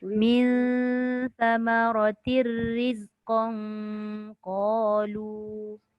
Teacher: Sekarang ni dia jumpa qaf huruf ikhfa. Dia kena samarkan bunyi dia.